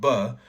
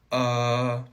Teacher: vocal tract so like if I make a b sound B where I'm blocking the air at my lips and then releasing it